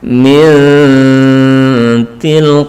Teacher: nun belum sampai menyentuh kepada huruf ta, belum sampai menyentuh, tapi disamarkan, mendekati. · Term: ikhfa aqrab